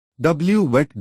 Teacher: W voiced approximant bilabial